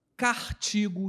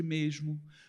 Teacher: a substituição do fonema S pelo fonema R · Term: rotacismo